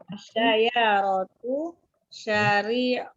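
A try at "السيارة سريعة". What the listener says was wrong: As-sayyaratu syari'atun. Ya, kalau syari'ah itu syariat ya. Ini pakai sin.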